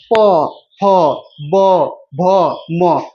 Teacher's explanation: दोनों होठवा आपस में सट जाता है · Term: ओठ